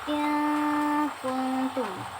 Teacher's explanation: apabila nun mati bertemu dengan kaf, maka kedengarannya seperti kita mengucapkan ng dalam bahasa Indonesia.